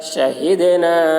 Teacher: شین کے اوپر زبر ہے، زبر کو جلدی پڑھیں، تھوڑا بھی نہ کھینچے۔ دال حروف قلقلہ میں سے ہے اور اس پر جزم ہے، اس لیے دال میں قلقلہ ہوگا.